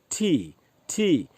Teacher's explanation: English वाला जो ठी बोलेंगे तो ये ट प्लस ठ का साउंड होता है